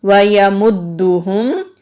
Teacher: وَيَمُدُّهُمْ میم کو دال کے ساتھ ملائیں گے، دال پر مشدد ہے، جہاں بھی مشدد والا حرف ہوتا ہے اس کو ہم مضبوطی کے ساتھ ذرا رک کر پڑھتے ہیں۔ یہاں بھی میم ساکن ہے، میم کی آواز کلیئر ہوگی۔